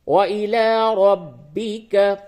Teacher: را با زبر رب، با زیر بی، کاف زبر کا، ربی کا، را کو پر کریں گے کیونکہ اس کے اوپر زبر ہے